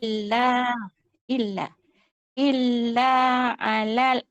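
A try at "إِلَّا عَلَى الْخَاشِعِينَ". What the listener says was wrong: alal kha. Jangan stop macam break. Alal kha. Jalankan je kita punya suara tu. Alal kha. Sebut lam yang sempurna.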